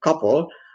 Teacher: in the word like copper, it's it appears in the middle and it's not aspirated